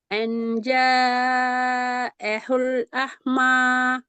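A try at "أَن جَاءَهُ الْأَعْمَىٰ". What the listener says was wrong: அஹு அல்ல, ஐன் வந்து இது. அஹுன்னா பிள்ளை ஐன் தான் வரணும். அஹுன்னா ஹே அது. இதுதான் வரணும். அழு அண்டு கலக்கக்கூடாது.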